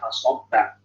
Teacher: Sob itu tebal, fa dan ba-nya tipis.